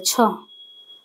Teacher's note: छ ध्वनि का उच्चारण स्थान तालव्य है